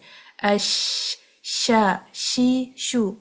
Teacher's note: ہماری جو شین کی آواز ہے نا ہوا کے ساتھ پورے اوپر نیچے پورے منہ میں پھیل کے آتی ہے باہر. اش شا شی شو مطلب دانتوں مسوڑوں یہ سب کے ساتھ وہ ٹکراتی ہوئی سیدھی باہر آتی ہے.